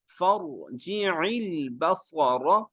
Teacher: صاد موٹا ہوگا، را موٹا ہوگا